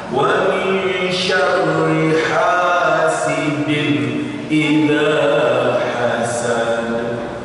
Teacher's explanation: ha-nya itu harus benar-benar ha yang keluar dari tenggorokan, kerongkongan.